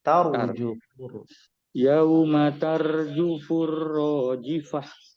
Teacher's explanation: Ra-nya ini ditebalkan ya. Kayak cadel gitu.